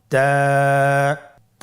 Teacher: জিহ্বার আগা সামনের উপরের দুই দাঁতের গোড়ার সঙ্গে লাগিয়ে উচ্চারিত হয়